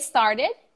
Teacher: the first s and the second s become one sound you do not include a vowel